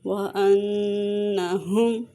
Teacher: نون مشدد پہ غنہ کریں گے اور میم کو ظاہر کر کے پڑھیں گے، یہاں پہ اظہار شفوی کا قاعدہ ہو رہا ہے